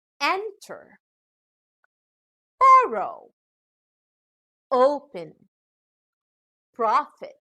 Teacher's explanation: These are two-syllable verbs where the final syllable contains a short vowel, so the stress is given on the first syllable.